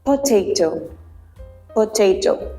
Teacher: plosives block the Airstream but then release it abruptly